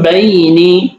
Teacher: নুন সাকিন অথবা তানবিনকে ছোট মিম দ্বারা পরিবর্তন করে গুণনার সাথে পড়তে হবে